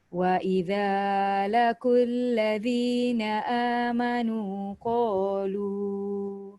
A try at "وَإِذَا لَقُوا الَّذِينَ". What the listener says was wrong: Wa idza laqul. Dia punya sebutan qaf tu tebal. Kalau laqul ladzi dia akan jadi kaf. Wa idza laqul ladzi.